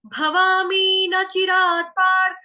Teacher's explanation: यहाँ पे न है, न चिरात, न, ना नहीं बोलेंगे, न। क्योंकि फिर उससे आपके श्लोक, जब आप आगे गायन करोगे ना श्लोक का, तो उसमें उच्चारण की आपकी प्रॉब्लम हो जाएगी फिर।